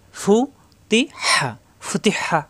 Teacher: ফু উপরে 2 দাঁতের আগা, নিচে ঠোঁটের পেটে লাগবে। ফু তি হা, ফুতি হা। · হা চাপ দিয়ে কণ্ঠনালীতে। মাকড়া সহ উচ্চারণ করতে হবে।